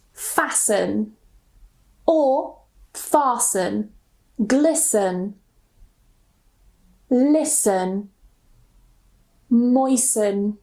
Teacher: if we have the ending S-T-E-N, we normally don't pronounce the T. So we just pronounce it sun, sun. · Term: silent T